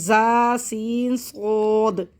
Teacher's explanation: सीन को सीटी से बारीक और सौद को सीटी से मोटा पढ़ेंगे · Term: सीटी वाले हरूफ